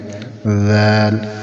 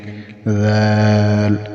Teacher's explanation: ذال کو زبان کی نوک اور اوپر والے جو سامنے والے دو دانت ہیں ان کے ساتھ لگائیں۔ ذال، ان کے کنارے، نوک ان کی، ذال، یہاں سے ذال ادا ہوگی۔